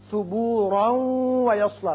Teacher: یہ وقت جب کیا تو ثبورا پڑھا، لیکن اگر ملانا چاہیں اس آیت کو اگلی آیت سے تو پھر را کی تنوین واو سے ملے گی، ادغام غنے کے ساتھ ہوگا